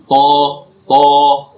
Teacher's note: Ya, jadi sama dengan huruf to. Huruf to itu ujung lidah bertemu dengan pangkal gigi seri depan atas. Tapi kalau dibaca tidak boleh monyong bibir.